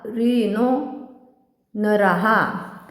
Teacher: पंक्तीच्या शेवटी येणाऱ्या विसर्गाचे उच्चारण ह सारखे केले जाते स्वरानुसार हे विसर्ग हे मध्ये परावर्तित होतात जस आता राहे तनराहा